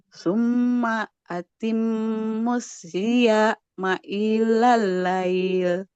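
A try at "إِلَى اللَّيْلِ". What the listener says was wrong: Jangan ilah. Ilal lail. Nah, nggak boleh ilah. Hamzanya nggak boleh panjang. Ilal lail.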